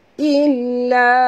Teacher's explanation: dekat lam ada tasydid jadi kita kena baca njut